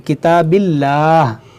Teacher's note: जलालत से पहले ज़ेर है, तो यहाँ पर इसको हम बारीक पढ़ेंगे